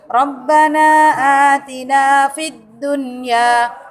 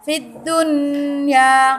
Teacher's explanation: Adun nya coba contohnya Subhana Atina Fiddunya enggak boleh dibaca Fiddunya itu salah kalau didengungkan karena ini adalah Idhar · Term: Idhar wajib